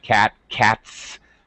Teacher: when it has a voiceless sound cat cats then it's an S sound